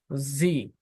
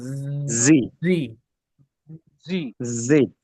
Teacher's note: অন্তস্থ জেটা জি মুখের মধ্যে একটা কম্পন হয়